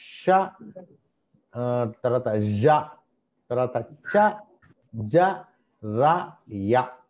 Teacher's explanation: ఇవన్నీ కూడా hard ప్యాలెట్ దగ్గర మనకు సౌండ్ క్రియేట్ అవుతూ ఉంటుంది. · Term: ప్యాలెటల్